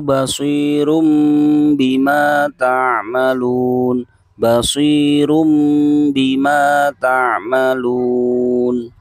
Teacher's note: Yang terakhir yaitu mengubah suara n menjadi mim atau dinamakan iklab.